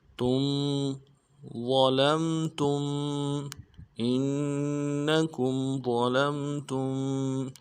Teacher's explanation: تا کو میم ساکن کے ساتھ ملانا ہے، میم ساکن میں غنہ کریں گے